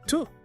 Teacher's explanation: The preposition to reduces to tuh, or sometimes it's duh.